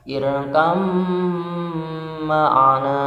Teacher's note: Contohnya irkab ma'ana, karena idgham mutaqariban mentasydidkan gitu ya, mentasydidkan huruf pertama pada huruf kedua, maka bacanya irkam ma'ana